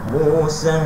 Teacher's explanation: Ambil minimum dulu. Musa 4 harakat. Lebih sikit tak apa, jangan kurang 4 harakat.